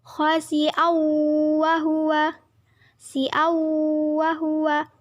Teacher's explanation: Khasi'aw wa huwa merupakan hukum bacaan idham bihunah karena huruf hamzah berharokat fathah tanwin bertemu huruf wawu, dibaca masuk dengan dengung dan ditahan sampai 3 harokat